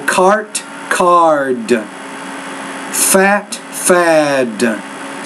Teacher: you need to make the vowel sound a little bit longer when it precedes that voice consonant